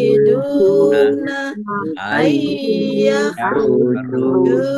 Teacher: wawu sukun juga mat tobi'i dibaca panjang dua harokat